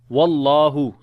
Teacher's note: So the name of Allah we read in heavy sound because there is fatha now on the waw.